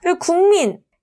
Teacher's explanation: 뒤에 있는 비음 미음의 영향을 받아서 이응으로 변한 비음화